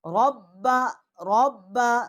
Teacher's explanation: را کو ہم پر پڑھیں گے، موٹا کر کے پڑھیں گے۔